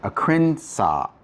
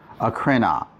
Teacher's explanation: They don't like having to pause when they say a word. So over time, the sigma drops, and if you just say krina, that's much easier to say.